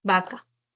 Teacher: Siempre la V la vas a transcribir como una B, como una oclusiva bilabial sonora